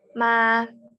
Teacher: Mimnya kerasa di bibir, tapi ketika madnya tidak terasa kan? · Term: muqaddar